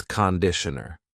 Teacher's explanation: The first vowel is a schwah.